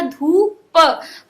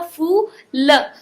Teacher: अब जैसे कि हमने इतने सारे वर्ड्स पढ़े हैं, इसमें आपको पता चल गया होगा कि बड़े ऊ की मात्रा में हम लोग छोटे ऊ की मात्रा की अपेक्षा दुगना समय लेते हैं उसका उच्चारण करने के लिए। तो यानी बड़े ऊ की मात्रा जब आएगी तो हम उसको थोड़ा सा स्ट्रेच करके पढ़ेंगे शब्दों को